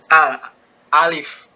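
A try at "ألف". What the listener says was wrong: kalau kita bilang A itu udah berharokat dia. A. Nah, itu udah berharokat. Tapi di sini tidak ada harokatnya.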